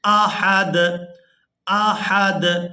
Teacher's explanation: یہاں پر آیت مکمل ہو رہی ہے، وقف کریں گے تو وقف کی صورت میں دال کو ساکن کر دیں گے، ہا کو دال ساکن کے ساتھ ملائیں گے